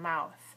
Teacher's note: ends with a voiceless th sound